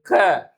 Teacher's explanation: நாக்கின் முதற் பகுதி மேல் அன்னத்தில் ஒட்டும்போது க